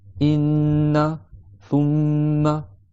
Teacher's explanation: Tu fais l'idrom 2 temps avec la runna, la vibration dans le nez, la nasalisation.